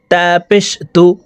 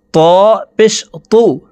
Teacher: তা হরফকে পাতলা ভাবে উচ্চারণ করে পড়তে হবে আর ত হরফকে মোটা করে উচ্চারণ করে পড়তে হবে